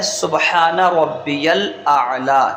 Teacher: سین کو باریک رکھیں گے، با میں قلقلہ کریں گے، ہا کو درمیان حلق سے ادا کریں گے اور ایک الف کے برابر کھینچتے ہوئے پڑھیں گے، اور نون پر زبر ہے تو بغیر کھینچے بغیر جھٹکا دیے پڑھیں گے۔